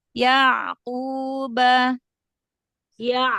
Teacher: huruf Ain dia bukan punya sifat syiddah ya bukan enggak terhenti ya enggak Terhenti Di makhrajnya tapi dia sedikit mengalir